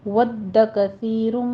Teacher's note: کثی میں سا پہ سیٹی نہیں لانی، کسی نہیں کہنا، نرمی سے پڑھنا ہے۔